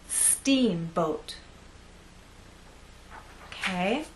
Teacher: we also need to make that first part longer, and then the second part will be shorter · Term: stressed part